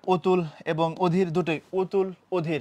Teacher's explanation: অতুল অধীর অর্থাৎ দুই জায়গাতেই এটা ও হবে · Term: সংবৃত